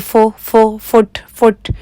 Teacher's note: जब हम कहते हैं ना फुट तो फुट तो देखि उस हम अपने होठों को गोल नहीं करते और ओ की आवाज आती है